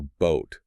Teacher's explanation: It's a very clean sustained vowel sound compared to the quicker sa o. · a very pure, long O sound, frequently without the off-glide or diphthongization that SAA usually uses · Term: long monophongal O